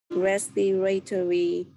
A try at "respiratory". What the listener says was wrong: So if you want to sound a little bit natural, make the A a little bit softer. So respiratory.